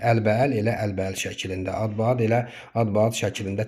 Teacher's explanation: Yəni, qoşa a-lardan biri düşüb, digəri uzanma halı yoxdur.